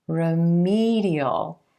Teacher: in red vowel sound if we add the suffix remedial remedial the emphasis shifts to the e as in green sound right before the suffix